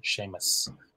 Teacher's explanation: That's a broad S at the end, Seamus. And the name Saoirse starts with a broad S, S-A at the start, and finishes with a slender S, S-E.